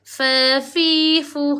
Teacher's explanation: tempat keluar huruf di kawasan perut bibir bawah dirapatkan ke gigi atas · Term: huruf fa